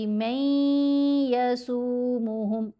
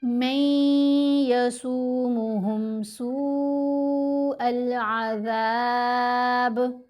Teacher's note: نون ساکن کے بعد یا ہے نا، دیکھیں یا ان حروف میں شامل ہے اور نون ساکن بھی ہے تو نون کی آواز یا کے اندر مرج ہو گئی، غنہ کریں گے